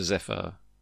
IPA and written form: ˈzɛfər (Zephyr)